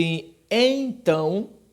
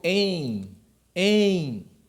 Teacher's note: E você vai ver em então, você vai ver que o E está com uma nasalização. Você vai ver o em, tá certo?